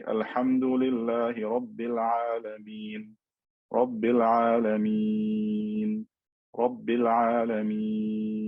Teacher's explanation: because this sukoon has appeared, but it's not original, I can stretch it for 2, 4, or 6 harakat. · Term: al-med al-aarid bis-sukoon